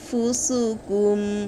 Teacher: নুন পড়বেন না, নাকের বাঁশির ভিতরে গুন্নার আওয়াজ জারি করবেন, তাহলেই পরিপূর্ণ ইকফা আদায় হবে।